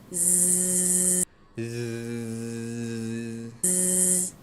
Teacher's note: One of the differences is that the Z sound can be held continuously.